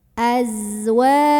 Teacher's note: namanya sifat sofir, artinya berdesis ya, seperti suara lebah.